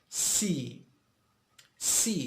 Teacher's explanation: Here the tip of the tongue, S, it's behind the upper teeth.